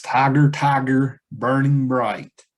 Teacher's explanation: stress, unstress, stress, unstress, stress, unstress, stress. That's almost a perfect trochaic line, right?